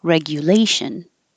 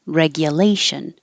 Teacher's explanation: you can say the GU like you, or gya like ya, because it's not stressed